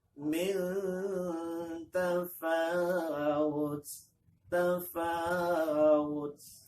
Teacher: Ikhfanya lama in. Mil ditahan agak lama. Ikhfanya, milnya.